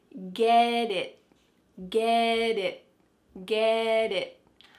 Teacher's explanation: That final T is not really pronounced. Your tongue is going to be in the same place as if you're going to make a T sound, but instead of letting that air flow out, your tongue just stops on the top of your mouth. That's why we call this a stopped T.